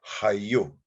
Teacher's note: We spell it with a single U, but it's actually an elongated vowel sound.